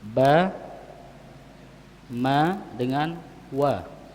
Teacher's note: 3 huruf ini yang dia keluarnya dari bibir, 2 bibir, ya, dari 2 bibir. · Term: huruf bibir